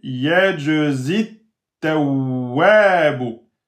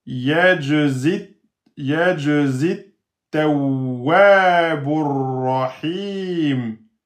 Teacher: Pas de prolongation avant hamzatul wasl. Donc, vous allez rester avec le zay kasra un temps. Et vous allez passer directement sur le ta avec shidda, bien sûr.